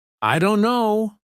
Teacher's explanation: Instead of pronouncing every letter, many native speakers say, I don't know. The T sound is dropped completely. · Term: dropped sounds